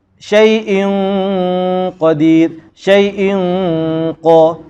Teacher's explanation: Tanwin bertemu dengan qaf, wajib baca bagi dengung. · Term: Ikhfa'